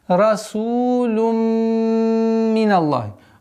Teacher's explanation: А здесь у нас идгам. Полная назализация, полная ассимиляция.